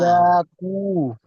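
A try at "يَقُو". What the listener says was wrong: ইয়াটা টান হবে না, ইয়াকু, ইয়াকু। আর মিম পেশ মু টান কেন হচ্ছে? মিম পেশ মু।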